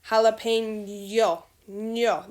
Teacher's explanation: La ñ parece que tiene Y después de la N.